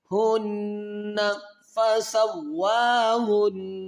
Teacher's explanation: ہنہ پہ نون مشدد ہے، یہاں پر غنہ کریں گے،